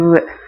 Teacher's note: பல்லிதழ் இயைய வகாரம் பிறக்கும்.